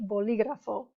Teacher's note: Because it breaks the rule, a written accent is needed. If the emphasis is on the third to last syllable, it doesn't matter what it ends in, okay?